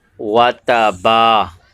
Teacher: با کے اوپر الف مدہ ہو رہا ہے، اسے ایک الف کی مقدار کھینچ کے پڑھنا ہے. تو لوگ جو ہے یہاں پر الف مدہ نہیں کرتے.